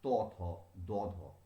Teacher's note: জিহ্বার অগ্রভাগ প্রসারিত হয়ে ওপরের দাঁতের সারি স্পর্শ করে শ্বাসবায়ু বাধাপ্রাপ্ত হয়ে যে ব্যঞ্জন উচ্চারিত হচ্ছে তাকে বলা হচ্ছে দন্ত ব্যঞ্জন।